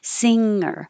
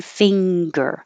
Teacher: The tongue in the back slides backwards on the top of the mouth so that it doesn't come down and release the air at once and make a g. So singer, you slide it back.